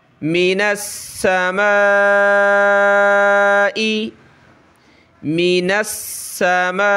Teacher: آگے نون کو سین کے ساتھ ملائیں گے، سین پہ ہم نے سختی کرنی ہے تشدید کی وجہ سے، اور اس الف کو ہم نے کھینچنا ہے مد کی وجہ سے